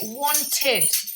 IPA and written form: ˈwɒntɪd (wanted)